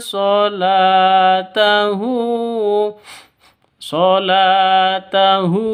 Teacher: la panjang dua ketukan karena ada alif diawali dengan fathah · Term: mad asli